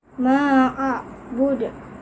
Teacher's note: Ada pantulan ketika kita ucapkan di akhir ayat, jadi hukum bacanya qalqalah kubra